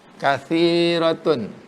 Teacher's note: mad asli yang huruf sa berbaris kasrah jumpa dengan huruf mad ya. Panjangnya 2 harkat. Panjangnya 1 alif, 2 gerakan jari, kathi.